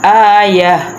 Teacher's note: جب وقف کرنا ہے تو ہم نے تا کی آواز نہیں، ہم نے ہا کی آواز نکالنی ہے